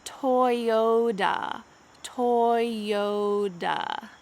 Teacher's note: Let's make sure that the second T in this word changes to a D. This is what happens in American English, often when there is a T between two vowels.